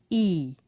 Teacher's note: When you say ah, you drop your jaw, and the tongue is low in the mouth. E is called a high vowel sound. When you say E, you raise the tongue.